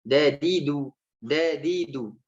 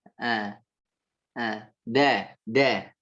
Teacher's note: Ujung lidah mengarah ke pangkal gigi seri atas. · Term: huruf dal